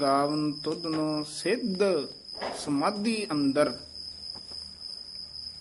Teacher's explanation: ਇਹ ਦਦੇ ਸਿਧ ਸਮਾਧੀ ਨਹੀਂ ਕਹਿਣਾ ਧਦੇ ਉਚਾਰਨ ਕਰਨੇ ਹਨ